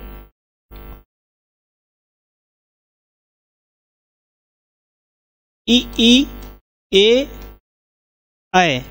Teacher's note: ये जो वर्ण है ई ई ए ऐ, ये जीभ के अग्रभाग से बोले जाते हैं